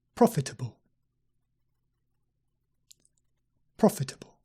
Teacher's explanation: profitable profitable with the stress on the first syllable